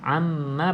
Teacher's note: pastikan mim yang bersabdu tutup mulut rapat ditambah dengan dengung dua harakat